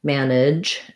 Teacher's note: So for manage, management, and managed, we have first syllable stress. We have that black cat vowel we've been talking about.